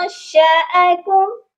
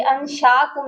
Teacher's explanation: شین کے ساتھ حمزہ ہے، اس کی آواز الگ آئے گی، انشاکم نہیں ہے۔